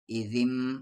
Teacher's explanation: اگر نون ساکن کے اوپر یہ میم آتا ہے تو یہ نون ساکن سائلنٹ ہو جاتا ہے، اور یہ جو پچھلا حرف ہے یہ اس میم سے مل جاتا ہے۔